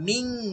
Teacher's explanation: ইকফা তো গোপন করা, লুকাইয়া পড়া, আপনাকে নুনটাকে লুকাইতে হবে, অনুস্বারের মতো পড়তে হবে। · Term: ইকফা গুন্না